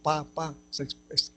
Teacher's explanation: Porque cuando se dice, por ejemplo, pa, quiere explotar, también se llaman explosivas. Bilabial, porque para pronunciar la P hay que juntar los labios.